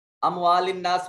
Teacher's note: نون مشدد ہے، غنہ واجب ہوگا